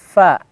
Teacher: Pa, tidak ya, tapi posisinya gigi atas kita ini nyentuh dengan bibir bawah. Kemudian ada dorongan angin, hembusan ya. Fa. Ya. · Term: huruf fa